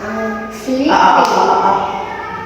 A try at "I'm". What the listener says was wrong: Close your mouth. I'm. I'm.